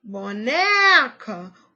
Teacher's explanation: o né é a sílaba tônica e as outras são átonas